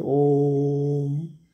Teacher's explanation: Actually ये प्लुत स्वर अब आजकल इसका प्रयोग बहुत कम होता है। इसमें ह्रस्व स्वर के तिगुना समय लगता है, 3 टाइम्स लगता है। जिसमें एक उदाहरण में, जैसे ये अंत में जो ये जो मात्रा दी है, इसके बीच में ओ और म के बीच में बहुत देर तक उच्चारण, जैसे ओम।